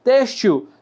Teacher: Lembrando que esse L aqui tem um sonzinho de U